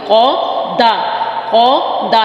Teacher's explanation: कौफ के चक्कर चक्कर में दाल को मोटा मत कर दीजिएगा।